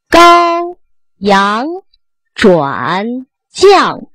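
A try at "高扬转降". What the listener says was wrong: 转 字 不 对 ， 转 ， 高 阳 转 降 ， 阳 没 发 到 位 ， 高 阳 ， 阳 不 是 阳 啊 ， 不 是 阳 ， 是 阳 ， 最 后 一 定 是 控 制 ， 失 去 控 制 的 字 音 都 是 错 音 。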